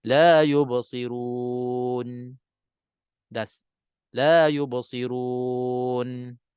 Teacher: Kita tahan nafas dan kita putuskan nafas daripada dia tertarik menjadi ziyadah ataupun tambahan pada sifat nun. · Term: qat'un nafas